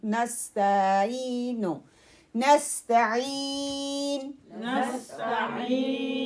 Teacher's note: تا کو کلیئر پڑھنا ہے، ٹھیک ہے، اس کی آواز کو لمبا نہیں کرنا ہے. نستعینو، نس سین کو کلیئر اور اسٹرانگ پڑھنا ہے، تا کو لائٹ پڑھنا ہے اور اس کی حرکت کو لمبا نہیں کرنا